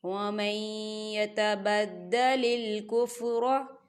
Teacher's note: نون ساکن کے بعد یا آ رہا ہے، یا حروف یرملون کا ورڈ ہے، تو یہاں پر ادغام ہوگا. ہم میم کو جو ہے یا کے اندر مدغم کریں گے.